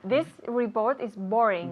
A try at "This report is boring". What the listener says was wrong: This report is boring. La B lo... Hacemos este ruido, ¿eh? Boring. Es mucho más fuerte que la B española, ¿ok? Boring. Y decimos report y no report, ¿ok?